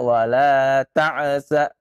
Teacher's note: Ain pun jangan antum kenakan qalqalah ya, sehingga ya wala ta'sa nah, jangan wala ta'sau Wala ta'saw fil ardi mufsidin.